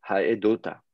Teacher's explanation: Et donc là, à ce moment-là, on dit, OK, j'ai le verbe témoigner, oifil, donc oifil, c'est faire témoigner, haed, et au lieu d'avoir haeta, on met une voyelle de liaison o